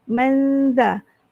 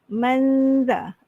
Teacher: dibaca dengan sembunyikan bunyi nun dan dengung 2 harakat. Sembunyikan tu maksudnya semasa menyebut man ni kita tak sebut man, tu tak ada dah.